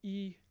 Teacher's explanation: you have this e high front